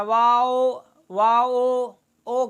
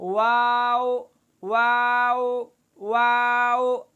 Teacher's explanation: ہونٹ کو گول کرتے ہوئے، ہونٹ کو گول کر کے مد کرتے ہوئے پورا حرف اس طرح پڑھنا کہ آخر میں حمزہ کے بجائے واو نرمی سے ادا ہو، جیسا کہ واو لین ادا ہوتا ہے نرمی کے ساتھ، واو واو واو، اس میں مد بھی پوری کی جائے واو، یہ لحاظ اس میں رکھا جائے۔